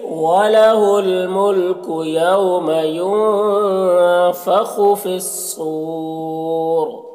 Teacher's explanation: پھر صور صاد کو پر پڑھیں گے، یہ حروف مستعلیہ میں سے ہے، اور یہاں پر جو ہے وقف کی صورت میں مد عارض وقفی ہوگا، اور را کو پر پڑھیں گے، کیونکہ را ساکن سے پہلے واو ساکن ہے، پھر اس سے پہلے پیش ہے، تو پر پڑھیں گے۔